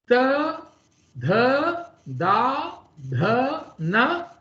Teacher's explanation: These are coming from the dental region. You will see that your tongue is touching your tip of your teeth. So these are dantavya.